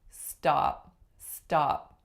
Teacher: can you tell that in stop there is no aspiration on my T